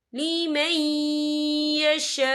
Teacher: और आगे देखें यशा, यहाँ खाली से पहले ज़बर है और इस पर मद भी है। ये मद जो है मद मुत्तसिल है, इसकी मिकदार 4 हरकत के बराबर है। तो हम इसे 4 हरकत के बराबर खींच के पढ़ेंगे।